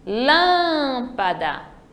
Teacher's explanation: já no lâmpada é a antepenúltima terceira sílaba Então ela é uma proparoxítona